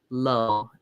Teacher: when they say low that their tongue is going behind their teeth